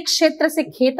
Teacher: अवधि भाषा में क्षत्रिय का क्ष छ और ख में बदलता है